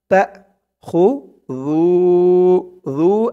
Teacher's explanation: একালিফ টান, পেশের পরে ওয়াও সাকিন